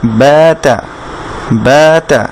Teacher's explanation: বায়ের সাথে এক আলিফ মাদ আছে, কিন্তু তায়ের সাথে কোনো মাদ নেই, সেজন্য তাতে আমরা টানছি না।